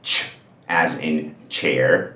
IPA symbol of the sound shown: tʃ